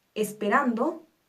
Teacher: esperando es una palabra grave nuestra sílaba tónica es ran